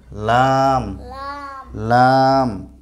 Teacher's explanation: লাম হরফটির মাখরাজ হলো জিহ্বার আগার কিনারা।